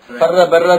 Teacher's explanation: bir harf takror 2 qatim o'qilgandek bo'ldi. Bu rami ashining o'rniga o'xshab qoladi deydi. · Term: Mudoaf